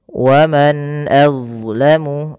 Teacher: pada lafal huruf dha, hati-hati teman-teman, jangan menggantinya dengan huruf zai gitu ya. Wa man azlamu, dia bukan az tapi dha ya.